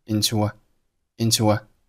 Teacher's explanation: 当前面单词以元音▁u▁结尾，后面单词以元音开头的时候，二者可以发生元音连读，中间会因为口型的自然过渡带出一个微弱的半元音▁w